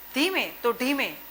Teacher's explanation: દંત્ય એટલે તથ દધ અને મૂર્ધન્ય ટઠ ડઢ. એ વ્યંજનોને અદલા બદલી કરે છે. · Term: દંત્ય અને મૂર્ધન્ય